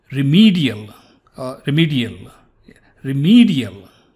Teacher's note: look at the middle e is stretched